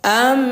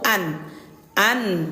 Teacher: Yang diganti itu suara nun sukun ini kita ganti menjadi suara huruf mim disertai dengung dua harakat atau dua ketukan. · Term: iqolab